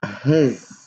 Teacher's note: بنكتبها S بس بنلفظها Z